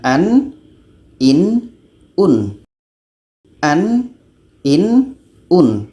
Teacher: Nun ini kita sebut secara jelas tidak ada anginnya